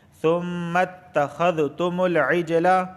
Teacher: بالبینات، بالبینات، وَلَقَدْ جَاءَكُم مُوسَىٰ بِالْبَيِّنَاتِ ثُمَّ، یہاں دیکھیں میم مشدد ہے اور میم مشدد ہمیشہ غنہ ہوتا ہے۔ ثُمَّ میم کو تا سے ملائیں گے، تا پہ تشدید آئی ہے